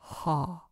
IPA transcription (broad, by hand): ħ